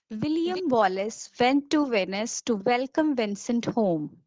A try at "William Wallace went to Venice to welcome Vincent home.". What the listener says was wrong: Just be careful with went. Make sure it's a W. You said vent. William Wallace went to Venice. Yes, went.